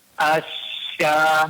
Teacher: sifat attafasyinya itu lebih dijelaskan yaitu suara dan angin menyebar di mulut. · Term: huruf syin